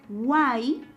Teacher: Cuando pronunciamos esta sílaba guay, notamos a una cerrada, abierta y cerrada. Eso quiere decir que es un triptongo porque la abierta es la que presenta la mayor fuerza de voz.